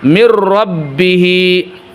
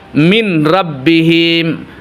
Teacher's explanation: dihilangkan ee nunnya tetapi langsung ditarik menjadi huruf ro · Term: idgam bila gunah, idgham bila gunnah